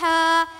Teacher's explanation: ह का मखरज वस्त हलक यानी हलक का दरमियानी